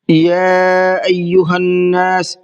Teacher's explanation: یا ایہا الناس، یا کے اندر مد منفصل کا قاعدہ ہے، اس لیے اس کو تھوڑا زیادہ کھینچ کر کے پڑھیں گے۔ ایہا نون پر تشدید ہے تو اس پر غنہ کریں گے۔